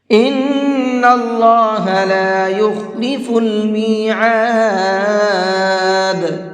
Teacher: ان کے نون کے اندر بھی غنہ کریں گے · اللہ کے لام کو پر کر کے پڑھیں گے، اس لیے کہ یہاں پر اللہ کے لام سے پہلے زبر ہے۔